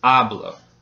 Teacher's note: the second to last syllable gets stressed, which in this case is the first syllable.